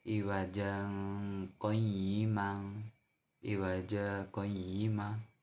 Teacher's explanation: Bacaan sakta yaitu berhenti sejenak tanpa bernafas